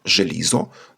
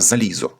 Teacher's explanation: Шиплячий ж уподібнився до свистячого з ілізо стало залізо. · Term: асиміляція уподібнення навпаки